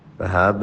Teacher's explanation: قلقلہ ہے، یہاں پہ جھٹکا دیں